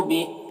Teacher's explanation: بہی میں کھڑا زیر ہے، سکون سے بدل جائے گا وقفی کی صورت میں